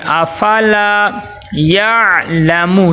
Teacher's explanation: تھوڑا سا زور لگائیں گے تاکہ وسط حلق کے درمیان سے عین ادا ہو، حمزہ اس کو نہیں بنانا۔